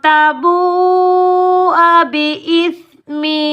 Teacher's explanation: بڑی مد مد متصل واجب کو 5 الف کی مقدار میں کھینچ کر ادا کریں گے